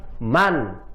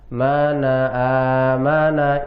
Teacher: Nah, maka artinya izhar halki, jelas terang pada tenggorokan. Karena huruf-hurufnya izhar halki, makhrajnya, tempat keluarnya semuanya ada di tenggorokan.